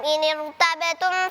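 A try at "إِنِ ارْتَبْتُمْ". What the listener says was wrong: Ya, seharusnya tebal. Tadi ketika tampil bacanya tipis.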